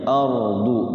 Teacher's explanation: hukum ro dibaca tebal atau tafkhim